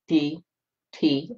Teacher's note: the tip of the tongue goes to the alveolar Ridge where you say a D or a T